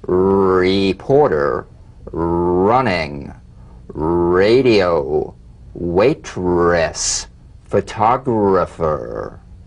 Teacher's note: feel the strongly vibrating R on the hard palate